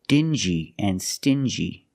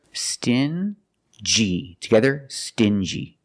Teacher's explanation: NG plus y but they're pronounced differently example dingi and stingy these two words have the regular n Sound n plus the J like juice together